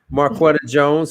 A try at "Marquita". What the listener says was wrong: Marquita. You said Marquetta. Marquita at the co-op spot.